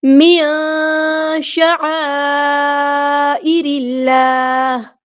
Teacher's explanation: عین کو وسطی حلق یعنی مڈل تھروٹ سے ادا کرنا ہے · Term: اخفا